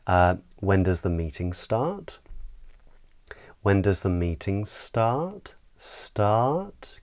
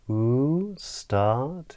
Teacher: So the pitch of our voice tends to go up. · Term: rising intonation pattern